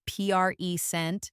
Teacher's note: with strong stress on the first part, it's a noun.